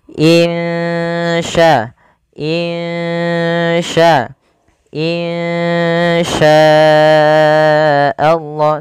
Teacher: samarkan suara nunnya kepada huruf sya. Insya, insya, insya Allah, sambil ditahan 2 harakat. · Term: ikhfa hakiki